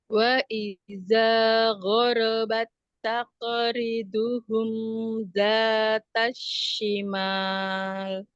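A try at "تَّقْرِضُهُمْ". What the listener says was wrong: Qafnya naik lagi. Taqo, taqo, taqori, taqoriduhum.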